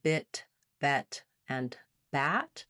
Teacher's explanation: between bit and bat, the tip of my tongue is getting more open. My jaw is also opening, but the back of my tongue is staying fairly high.